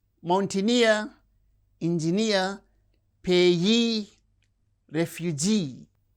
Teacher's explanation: words that end with the suffix near receives stress on the suffix itself